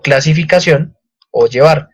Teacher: éstas tienen su sílaba tónica o su acento ortográfico en la última sílaba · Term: palabras agudas